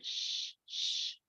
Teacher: nothing happens in your throat okay so it's voiceless